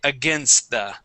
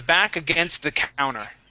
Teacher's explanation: so from that s right into the th